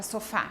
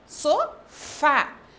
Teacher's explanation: então o fá é a sílaba tônica da palavra sofá